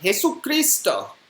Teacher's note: the final S in Jesus is supposed to be silent